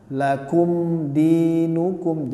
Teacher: Jadi dia harus dibaca dengan jelas, izhar syafawi. Mim sukun bertemu dengan dal, jadi nggak boleh ditahan atau didengungkan.